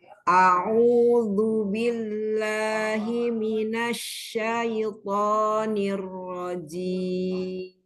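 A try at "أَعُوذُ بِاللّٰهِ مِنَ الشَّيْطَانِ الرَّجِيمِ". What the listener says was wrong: Ya, nanti latihan fathah yang A ya, ya. Masih tebel hamzahnya. Ya, jadi jangan lah, enggak lidahnya santai, lidahnya datar. Lidahnya datar aja, lidahnya istirahat. Ketika fathah, lidah istirahat. Tapi didorong. Didorong. A-nya selesaikan, jangan langsung ke ain. A'udzu.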